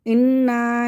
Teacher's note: نون مشدد پہ غنہ کریں گے، الف مدہ کو کھینچ لیں گے، کھینچ کے پڑھنا ہے، اس کو بغیر کھینچے نہیں پڑھنا ہے.